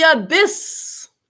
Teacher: That first syllable is unstressed.